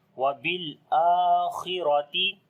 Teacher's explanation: Kha we read in heavy sound. Similarly, ra we read in heavy sound.